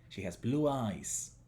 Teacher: Acá, eyes está en posición final. Hay silencio, viene de silencio después de eyes. Por lo tanto, la vibración de la Z pasa a ser una S.